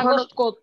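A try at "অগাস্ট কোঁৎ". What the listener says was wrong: আগস্ট না তো, অগাস্ট।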